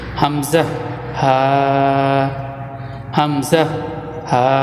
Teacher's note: হলকের শুরু হইতে দুইটি হরফ উচ্চারিত হয় · 1 নম্বর মাখরাজ, হলকের শুরু হইতে। হলকের শুরু হইতে 2টি হরফ উচ্চারিত হয়, সেটা হচ্ছে হামজা হা, হামজা হা।